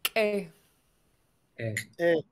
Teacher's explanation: So we have a long, high A sound. In Lingit, we call it one vowel, even though it's written with two letters. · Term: long vowel